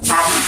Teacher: dilafalkan dengan ujung lidah ditempelkan pada gusi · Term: konsonan hambat alveolar